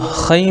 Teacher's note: اجرا صرف ہم جو ضروری قواعد ہیں صرف اجرا اس کا اجرا کریں گے, زبر زیر پیش کا اجرا نہیں کریں گے ہم اس میں. تو خی میں یا ساکن سے پہلے خا کے اوپر زبر ہے اس لیے یالین ہوگا, یالین کو نرم آواز کے ساتھ جو ادا کریں